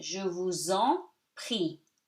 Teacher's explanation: S between two vowels, even if it's in separate words, is pronounced like Z. So you link them together.